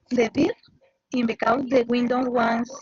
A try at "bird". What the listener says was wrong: bird, con E, bird. con E. Haz de cuenta que esa I es una E.